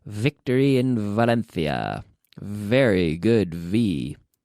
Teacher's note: So we start with the F. We add the vocal cords and we have very good V.